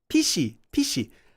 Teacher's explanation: Korean doesn't have an F Koreans would pronounce this as pishi